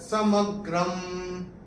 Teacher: अनुस्वार चरण की समाप्ति पे आएगा, तो उसका उच्चारण केवल और केवल म ही होगा